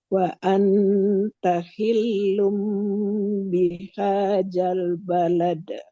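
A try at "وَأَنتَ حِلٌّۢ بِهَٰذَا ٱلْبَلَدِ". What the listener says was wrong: Ini balik lagi seperti ada J-nya. Jangan ada J-nya.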